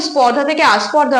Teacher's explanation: কিন্তু আ নেই কিন্তু এখানে যখন ধ্বনিটা পরিবর্তন হয়ে গেছে তখন প্রথমেই একটা নতুন স্বরধ্বনির আগমন হয়েছে সেটা হচ্ছে আ তাহলে এই আ ধ্বনিটার আগমন হয়েছে একেবারে শব্দের প্রথমে তাই এটাকে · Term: আদি সরাগম